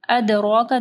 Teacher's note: دال کے اوپر کلکلہ کرنا ہے، را کے اوپر زبر ہے، را موٹی پڑھی جائے گی. ادراک، کاف کو نرم پڑھنا ہے.